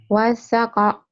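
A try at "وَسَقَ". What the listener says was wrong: Datar. Kalau wasako ada tasdid.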